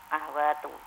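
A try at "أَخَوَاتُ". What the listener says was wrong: Nah, atau khoknya itu sebenarnya berfathah kalau bahasa Arab. Akhawatu. Nah, kalau ke Indonesia kan disukunkan akhwat, tapi sebenarnya akhawatu.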